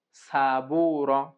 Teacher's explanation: সামনের নিচের দাঁতের আগা থেকে শীষ সহ পাতলা ভাবে আদায় হবে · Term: শীষ দেয় সফির